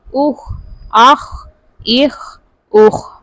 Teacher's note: خا بھی پر پڑھا جائے گا، حروف مستعلیہ میں سے آ رہا ہے